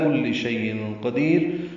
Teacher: تنوین کے بعد قاف آنے کی وجہ سے شیء میں اخفا ہوگا